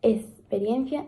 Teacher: la pronunciación como la s de la x ante consonantes